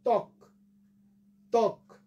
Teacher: কয়ের মধ্যে অ আছে বাট উচ্চারণের সময় আমরা সেটা উচ্চারণ করি না, যার জন্য এটা হলো ত্বক।